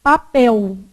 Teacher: bom senso então o que que acontece com esse L aqui o l ele pode ser pronunciado com som de u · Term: l vocalizado, L vocalizado